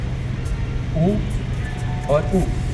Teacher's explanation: दो बार ऊ के जोड़ने से साउंड बन गया बड़ा ऊ। तो ये हमारा दीर्घ स्वर इसमें स्वास की तीव्रता बड़ी देर तक रहती है।